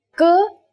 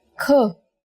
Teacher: For example, k is a consonant, and when we say it with aspiration, it becomes another consonant kh